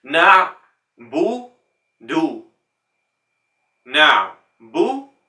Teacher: What we want is not this English O sound, we want to round the lips.